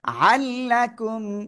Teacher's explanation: আজকে রুলস ধরবো এবং অন্যান্য কারণে আজকে ক্লাসে আসছি হ্যাঁ হাল্লাকুম তানভীনের পরে ইদগামে বেলা গুন্নার অক্ষর লাম আসছে গুন্না ছাড়া মিলিয়ে পড়তে হবে